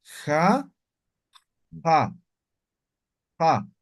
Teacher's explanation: la X es fricativa. Ja, como raspando van a pronunciar.